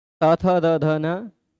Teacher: देखिए बोलते समय जीभ दांत पर टच कर रही है